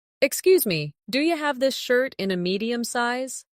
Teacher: do you becomes do ya in natural speech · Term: connected sound